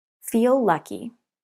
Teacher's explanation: The two words share the l sound. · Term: Linking two consonants